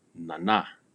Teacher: for the most part, all Numu words, the stress or the accent is placed on the second syllable. Nana. It is not nana, nana.